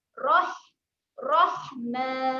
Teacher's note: Kemudian huruf ha ni kena tekanlah di tengah kerompong.